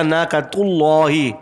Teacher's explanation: اللہ کا لام یہاں پر موٹا پڑھا جائے گا